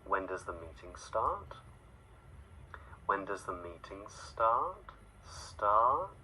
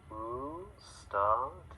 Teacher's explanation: It rises, it comes up in the voice.